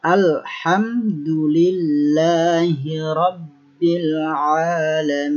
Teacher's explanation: lam tidak boleh dibaca memantul. Atau seperti kalau di dalam kaidah tajwid itu seperti qalqalah.